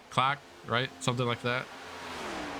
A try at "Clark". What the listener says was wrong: Close. No R's.